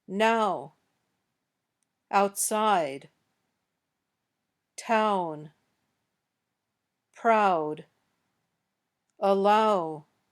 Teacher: When you say this sound, your lips also change their rounding. They start out open and not rounded, but at the end they're rounded. Look in a mirror as you say these words.